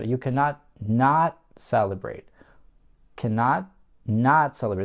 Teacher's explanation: второе not я выделяю, потому что это тема высказывания, это то, на что я хочу, чтобы мой собеседник обратил внимание. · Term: логическое интонационное ударение